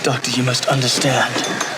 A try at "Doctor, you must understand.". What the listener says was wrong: Doctor, you must understand. There's that long vowels again. Not just understand. Like, it doesn't make it British if you just make it really long like this.